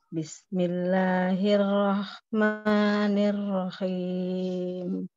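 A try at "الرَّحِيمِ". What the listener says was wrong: Nirrahim. Jangan ada suara keh, jangan ada kayak suara kho. Di tengah tenggorokan aja. Nirrahim, dan khim. Jadi kho kan. Turunin lagi di tengah tenggorokan. Belum. Jangan ada suara ngoroknya.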